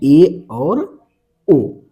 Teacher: अर्ध संवृत का मतलब है हाफ क्लोज, बोलते समय आधा मुख बंद हो। इसमें 2 आते हैं, ए और ओ।